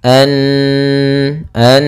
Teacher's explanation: maka ia dibaca dengan bacaan gunah gunah yaitu menahan suaranya